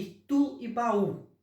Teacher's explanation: Tanto itu quanto baú tem as sílabas com o U pronunciadas mais fortemente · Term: oxítonas